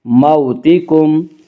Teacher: واولین وہ واو جو ساکن ہو اور اس سے پہلے زبر ہو، واولین کو نرم آواز کے ساتھ جلدی پڑھیں گی۔